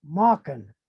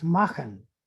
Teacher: in mode german they continue to say mauken for make but in the consonant shift where they change the k to ch it's makhan and that word became makhan but they continued to